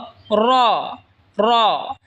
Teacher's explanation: জিহবার আগা সামনের উপরের দাতের আগার সঙ্গে লাগা উচ্চারণ হবে জাল এই সা যেখান থেকে উচ্চারণ হয়েছে সেখান থেকে জাল উচ্চারণ হবে এরপর হল র জিহবার আগার পিঠ তার বরাবার উপরে তালের সঙ্গে লাগায় উচ্চারণ হবে র